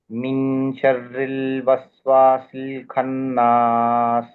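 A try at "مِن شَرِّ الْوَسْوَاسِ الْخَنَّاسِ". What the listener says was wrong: ఇక్కడ ఆగకూడదు మీ షర్ల్వస్వాసిల్హన్నా షర్ల్ ఆగకూడదు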